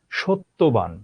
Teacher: জফলার উচ্চারণ নাই, তটা দ্বিত্ব হলো।